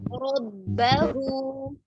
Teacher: इसमें रा तो पुर है लेकिन बा को मोटा नहीं करेंगे